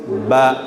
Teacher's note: Ba ini terjadi karena ada pertemuan dua bibir. Bibir atas dan bibir bawah.